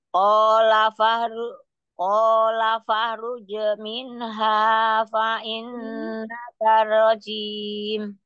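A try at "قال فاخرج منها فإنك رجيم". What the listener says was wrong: Bukan faha, faha langsung di ini dulu, kho-nya disempurnakan dulu kho-nya. Kho sukunnya. Qala fakhruj. Qala fakhruj minha fa innaka rajim.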